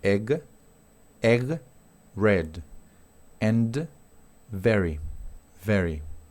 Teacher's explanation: Tenemos esta E que es más parecida al español, es una E corta